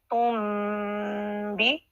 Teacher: جب جب میم نون ساکن کے بعد با آتا ہے تو اس نون کے اوپر چھوٹی سی میم لکھ دی جاتی ہے. اب ہم یہ نون نہیں پڑھیں گے بلکہ میم پڑھیں گے، تن نہیں پڑھیں گے، تم بھی. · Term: اقلاب